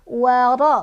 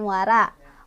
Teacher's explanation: Ro-nya dibaca tafkhim, ro-nya berbaris fathah, jadi bacanya tebal ya. Waro bukan wara.